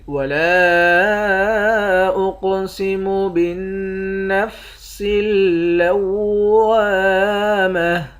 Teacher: لام کے بعد الف ہے، اس الف کے اوپر مد ہے، اس مد کو بھی 3 الف کے مقدار کھینچ کر پڑھیں گے۔ قاف کو موٹا بھی پڑھیں گے، قلقلہ بھی کریں گے۔ نون مشدد پر غنہ کریں گے، لام پر اور واو پر، ان دونوں حرف پر تشدید ہے۔